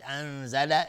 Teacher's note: انزل اخفای حقیقی، نون ساکن بهش زای اومده